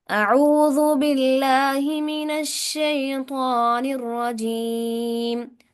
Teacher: तौ को मोटा पढ़ेंगे, तौ हरूफ मुस्तालिया में से है